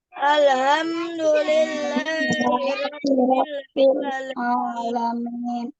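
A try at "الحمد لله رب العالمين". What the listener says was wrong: Ada H-nya masih H besar.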